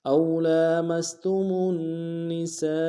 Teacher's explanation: سین کے اوپر مد متصل ہے، کم سے کم 3 انداز میں کھینچیں گے